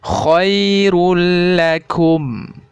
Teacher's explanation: dhommatain bertemu dengan huruf lam maka harus dibaca tanpa mendengung